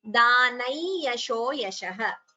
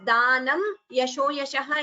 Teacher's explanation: anuswara followed by ya, like we learnt in the last class, it would get optionally a nasal tone. So instead of tapodanam, we chant it as danai yasho yashah.